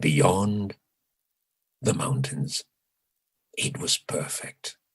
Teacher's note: say beyond i um i used a long syllable in beyond i produced beyond with extra length